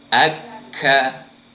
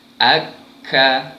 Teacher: Sama juga tempat keluarnya pada pangkal lidah yang dinaikkan pada langit lembut belah atas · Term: huruf kaf